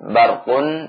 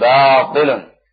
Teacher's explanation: ba juga termasuk di antara huruf yang qalqalah. Tapi sekali lagi dengan sifat istifalnya tetap dibaca tarqiq ini.